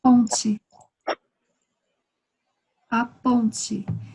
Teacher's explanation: quando finalizamos com TE, pronunciamos como se fuera TI